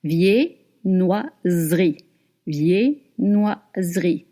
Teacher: Do not pronounce the E between the S and the R.